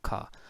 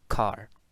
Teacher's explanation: In received pronunciation, this word has no coda. This word will pronounce as ka. But in American English it has a coda, because in American English it will pronounce as car.